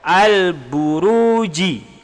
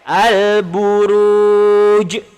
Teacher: Qalqalah kubra terjadi ketika waqaf ataupun berada di ujung ayat. Cara bacaan dia lantun, cuma lantun dia lebih keras ataupun dia lantun dia besar.